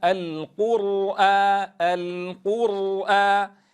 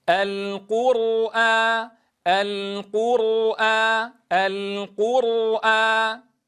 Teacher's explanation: الراء ساكنة مسبوقة بضم فلا بد من تفخيمها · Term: تفخيم الراء